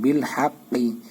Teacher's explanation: হাটা চাপাই বলবেন, কপটা মোটা করে বলতে হবে।